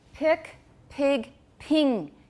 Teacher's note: Can you hear that vowel getting higher and higher?